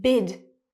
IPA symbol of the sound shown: ɪ